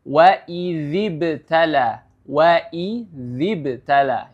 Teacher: perlu diperhatikan makhrajnya berada pada ujung lidah dan cara membacanya adalah ujung lidah itu dikeluarkan sedikit ya ujung lidah dikeluarkan sedikit atau dengan kata lain digigit sedikit untuk memunculkan huruf dalal